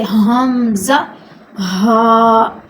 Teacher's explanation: اب جو حلق کے جو نیچے والا حصہ ہے، جس کو میں نے کہا ہے انتہائی حلق کا آخری حصہ، اس سے 2 حروف نکلتے ہیں، حمزہ، ہا۔ یہ چونکہ حلق کے آخری والے حصے سے ادا ہوتے ہیں، تو یہ جب ہم اس کو نکالتے ہیں، ان کی آواز باہر نکلتی ہے تو یہ تھوڑی بھاری لگتی ہے